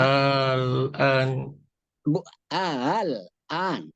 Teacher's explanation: kalau yang di tahsil itu Al-an. Huruf hamzah kedua dibaca sepertiga bunyi. Dibaca antara bunyi hamzah dan alif.